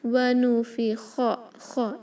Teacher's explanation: خو کو ہیوی رکھیں گے کیونکہ وہ حروف مستعلیہ ہے. ونفخ، خ اس کو خا نہیں پڑھیں گے.